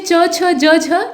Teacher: ये सब तालु से उच्चारित होते हैं, मतलब आपकी जीभ जो है ना वो आपके तालु से चिपकेगी जब आप इनका उच्चारण करेंगे। जैसे च, बिना तालु के सहयोग के आप इसे नहीं उच्चारित कर सकते हैं, जीभ भले ही हिलती रहे। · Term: तालव्य